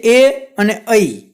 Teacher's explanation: એ અને ઐ બોલો એમાં કંઠ અને તાળવું એ બંનેનો ઉપયોગ થાય છે કે બંને સ્થાનમાંથી એ બોલાય છે. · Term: કંઠ તાલવ્ય